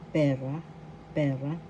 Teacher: first syllable pe second syllable ra the first syllable has the accent